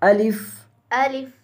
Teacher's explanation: आ को लंबा नहीं करना